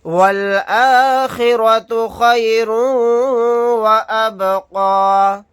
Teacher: تنوین کے بعد واو آ گیا تو یہاں پر ادغام کا قاعدہ ہوگا، یعنی واو کے اندر ادغام کر کے پڑھیں گے